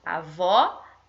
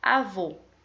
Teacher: acento agudo igual expliquei aqui em avó indica som aberto e acento circunflexo indica o som fechado